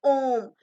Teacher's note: इसके उच्चारण में ह्रस्व और दीर्घ स्वरों के उच्चारण से तिगुना समय लगता है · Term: प्लुत स्वर